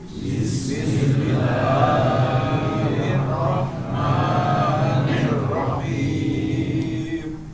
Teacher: Kadar mat tabi'inya kepanjangan pada lafadz Allah dan ma.